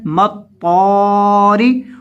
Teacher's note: रा के नीचे ज़ेर है, इसको बारीक करना है